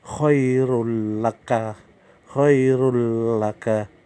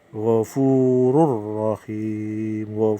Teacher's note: Kalau idgham bilahuna ini memasukkan tetapi tidak berdengung.